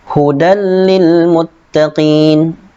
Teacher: Hudan lil muttaqin, tidak ditahan. Masuk tanwin masuk kepada lam, akan tetapi tidak ditahan 2 harokat, tidak, langsung masuk saja.